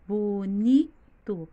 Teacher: Vocês já podem observar que o ni é o mais forte. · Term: sílaba tônica